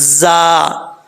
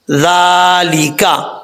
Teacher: زا بن جائے گا، سیٹی کے ساتھ پڑھا جائے گا